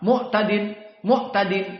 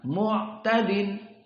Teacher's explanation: Ain disukunkan ada jenjang waktu namun tidak begitu panjang seperti Za dan Sin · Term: tawassud